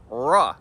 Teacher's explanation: the R sound is articulated with your tongue pulled back and not touching anything